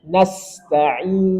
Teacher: Kemudian sin punya sifat rokhawah. Dan ada sofir itu desis. Nasta'in, jadi lepaskan suara dengan sempurna dan ada sofir desis.